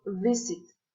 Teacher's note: next zone is its place of articulation is um labia dento the lower lips comes into contact with the upper front teeth to articulate the sound and there is friction between the lower lip and the teeth